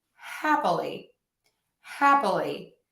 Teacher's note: I am actually shortening or reducing one of those syllables to the schwa